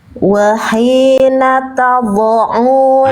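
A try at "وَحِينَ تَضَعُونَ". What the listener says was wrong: Nah itu bocor. Jangan bocor. Tabo, bo, bunyinya sorry, jangan ada fo, jangan ada fo, jangan ada vo ya, jangan ada desis, jangan ada nafas.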